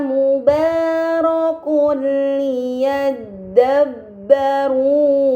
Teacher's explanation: yang bertemu dengan huruf lam ini dinamakan idgham b gunah maka dommahtain harus dibaca secara melebur tanpa gunah yang dipanjangkan